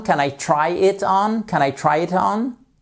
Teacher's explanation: On remonte puisque c'est yes you can, no you can't. C'est une yes, no question. Donc l'intonation remonte sur la fin.